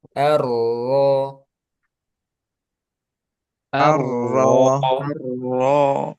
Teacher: Kemudian arro di sini rnya tebalkan. Ar itu tebal sukunnya. Kemudian ro itu juga tebal.